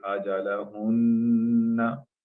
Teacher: shadda on mim or noon, as we join them together, we prolong it